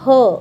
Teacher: यांचा समावेश कंठवर्णांमध्ये होतो कारण त्यांचा उच्चार जो आहे तो कंठस्थानापासून होत असतो